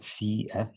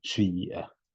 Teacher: Example I kind of gave, apart from manna, you can hear it more clearly in another riwayah when you're reading. So rather than saying si'a, you're saying shi'a, and that is controlled by the retraction of the lips. And this can basically be done, by letting air flow through it in a precise manner. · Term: Ishmam